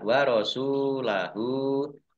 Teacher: sin domah wawu sukun, mat tobi'i, panjang dua harokat. Domir ha, domah terbalik, mat silah kosiroh. · Domir ha, domah terbalik, mat silah kosiroh. Dibaca panjang dua harokat. Sama dengan mat tobi'i.